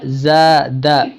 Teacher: زا الف زبر زا، دال زبر دا زا دا، دال کو نہیں کھینچنا ہے، صرف الف کو